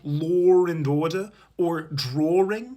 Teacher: some British people insert the letter R into words where it doesn't belong